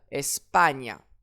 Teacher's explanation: J'accentue donc l'avant-dernière syllabe.